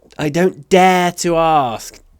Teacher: Интонации здесь это отрицание. Соответственно, голос поднимается на вспомогательный глагол.